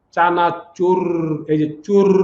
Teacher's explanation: এর উচ্চারণে জিহ্বার অগ্রভাগে মৃদু কম্পনের সৃষ্টি হয় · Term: কম্পনজাত